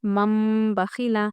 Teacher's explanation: آپ کو کیا کرنا ہے، نون کو میم سے بدلنا ہے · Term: اقلاب